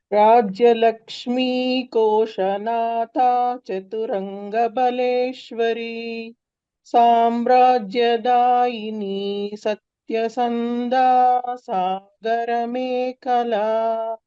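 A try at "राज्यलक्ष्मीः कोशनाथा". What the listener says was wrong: So, Bhagini, in this case, there is a Visarga, right, after Lakshmi. So, that half Visarga should be heard, not complete, okay? Rajya Lakshmi Koshanatha.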